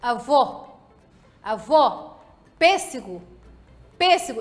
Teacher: O acento circunflexo indica a sílaba tônica com vogal fechada nos casos em que é preciso acentuá-la.